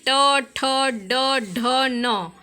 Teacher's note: ट वर्ग में मूर्धा से स्पर्श करते हैं